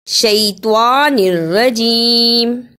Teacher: توا کی جگہ پہ تا کی آواز نہیں آنی چاہیے